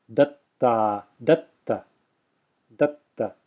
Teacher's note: There's a pause there, effectively, because I'm extending the first ta in a silent way. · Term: double ta